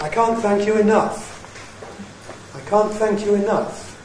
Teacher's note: Two accents, one on can't, one on enough. What's I? That's unaccented at the beginning, that's prehead.